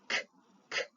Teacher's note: a C Sound which is made right at the back